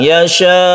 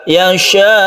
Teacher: Kemudian sukun hamzanya harus diperjelas, yasha. Jadi sukun hamzanya harus benar-benar disukun hamzah ya, tidak mengambang. Yasha itu mengambang.